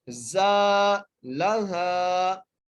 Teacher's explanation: آخر میں ہا کو ایک الف مقدار کھینچ کے پڑھنا ہے